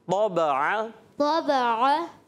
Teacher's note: طا موٹا، با باریک، عین باریک.